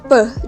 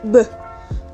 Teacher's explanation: Bunyi p dan bunyi b dihasilkan karena bertemunya bibir atas dan bibir bawah yang diucapkan secara tertutup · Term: bilabial plosive